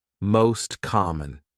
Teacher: T disappears, the words are linked together.